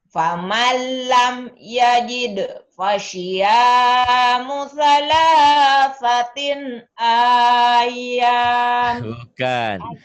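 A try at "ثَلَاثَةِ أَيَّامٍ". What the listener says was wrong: Bukan salah satin. Kan ada tanwin. Salah sati ayam. Ayam. Salah sati. Faman lam yajid fasiyamu thalathati ayyam.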